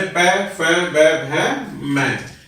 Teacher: ओष्ठों से बोले जाने के कारण इन्हें ओष्ठवर्ण कहते हैं